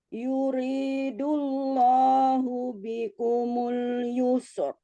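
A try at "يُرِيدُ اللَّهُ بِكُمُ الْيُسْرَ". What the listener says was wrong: Allahnya agak Allah, jangan lagi yuridullah, dibuka mulutnya. Coba bilang Allahu Akbar, coba. Benar Allahnya. Cuman mungkin ada du ya. Jadi tadi agak susah turun. Yuridullah. Enggak, bukan turun. Dia tetap tebal, tapi mulutnya tuh jadi kayak yuridullah. Jadi ke O.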